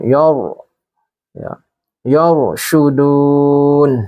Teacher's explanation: Yar ini ada ro tafkhim karena sebelum ro ini ada harokat fathah. Jadi ro-nya dibaca tafkhim, ditebalkan.